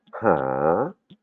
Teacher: Par exemple, dans le verbe chercher, là, pareil, on a un H qui qui est placé devant la voyelle, c'est-à-dire la lettre Han, hip, et là, ça va se prononcer pas A, mais ha, comme si je me bouchais le nez. Hein, c'est le verbe chercher. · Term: H inspiré